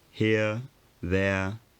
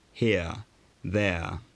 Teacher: for upper class speakers the tongue was slightly higher here there for lower class speakers the tongue was slightly lower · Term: central vowel or glide